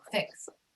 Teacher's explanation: Fix ends in a non-voiced consonant sound. S, fix, or KS, fix.